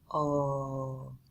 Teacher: you want to make sure that you're only pronouncing the beginning of that O sound. So we're going to round our lips again